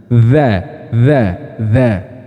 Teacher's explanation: makhrajnya dalal ini terletak pada ujung lidah bertemu dengan ujung gigi seri bagian atas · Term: huruf dalal, dzal